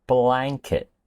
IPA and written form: ˈblæŋ.kɪt (Blanket)